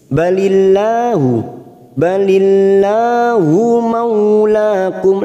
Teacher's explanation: lam jalalah yang didahului kasroh, kita baca tarkik tipis. Balillahu maulakum, la kita panjangkan 2 harokat.